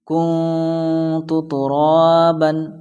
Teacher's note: یہاں پر ہمارا جو لیسن کا مین پوائنٹ ہے وہ یہ ہے کہ نون ساکن کے بعد ان 15 لیٹرز یعنی حروف اخفا میں سے 15 لیٹرز میں سے تا آیا ہے، فرسٹ میں تا آیا ہے تو وہی یہاں تا آیا ہے، تو اس لیے یہاں اخفا ہوگا، یعنی ناک میں آواز جائے گی، ناک میں آواز کو چھپا کر پڑھنا ہے۔